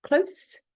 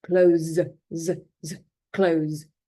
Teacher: when it's an adjective, it is the unvoiced s sound, close. Whereas when it's a verb, it's the voiced consonant sound.